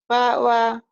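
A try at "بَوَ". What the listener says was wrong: Bawa gitu ya. Nggak boleh dientek-entek lagi. Kalau tadi memang bata, sekarang masih misah. Gabung udah beda lagi ya.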